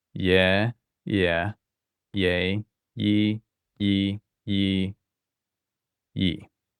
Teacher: when we do gamma with a front vowel, it sounds like a y